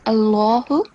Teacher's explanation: here you have to make the lam thick, Allahu, and try to make a jerking sound on all the red squares you can see.